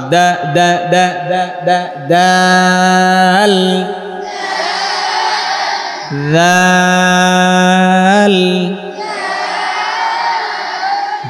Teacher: দাল, জিহ্বার আগা সামনের উপরে 2 দাঁতের গোড়া